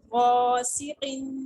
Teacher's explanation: غین کے ساتھ الف بھی موٹا پڑا جائے گا، وہ قاف پہ ہم وقفن کی صورت میں قلقلہ کریں گے.